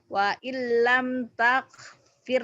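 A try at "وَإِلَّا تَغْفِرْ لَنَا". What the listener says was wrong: tak, bukan tak, tag, tag. Tagfir.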